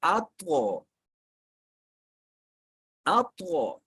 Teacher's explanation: طا کے اوپر آیا ہے جزم، تو اس لیے یہاں پہ ہوگا قلقلہ، آواز لوٹ کے آئے گی